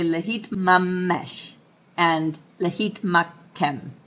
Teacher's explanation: So it's not really, I'm not saying lehitmakem. I'm just kind of holding that kof a little bit longer, or that mem. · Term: doubling dagesh